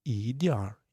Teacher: if you want to read it with R you need to remove N